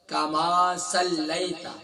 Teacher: لام کے بعد جو یائی یہ یائی لین ہے، اسے سافٹ کر کے پڑھیں گے. کما صلیت، اور مجھول نہیں پڑھیں گے، معروف پڑھیں گے.